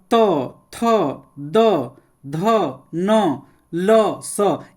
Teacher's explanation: ये सब दंत से उच्चारण स्थान होता है